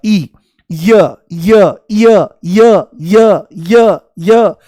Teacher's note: देखो जैसे ही य बोलोगे तो इ शुरू में महसूस होगा। इ य य य य य य य जैसे सीढ़ी अटक गई हो तो इ की ध्वनि आती है। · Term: अर्धस्वर